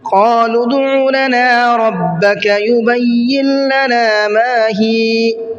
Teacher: لام کو ڈائریکٹ دال میں ملایا ہے اور بیچ میں واو الف اور الف ان کو چھوڑ دیا ہے